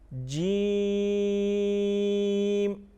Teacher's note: جیم کو 5 الف کے برابر کھینچ کے پڑھتے ہیں